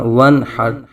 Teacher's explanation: نون ساکن کے بعد حروف حلقی میں سے حا آنے کی وجہ سے نون ساکن میں اظہار حلقی ہوگا. بغیر غنہ کیے پڑھیں گے.